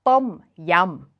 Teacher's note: that unaspirated th sound with a short o vowel and then the rising and falling tone of Tom